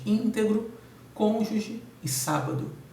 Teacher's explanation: todas acentuadas na antepenúltima sílaba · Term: proparoxítonas